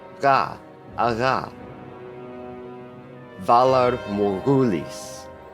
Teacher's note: gh is the same sound as KH but with some of your voice added in with the vibration at the back of your mouth ha ha Valar morghulis you'll only find the sound in loanwords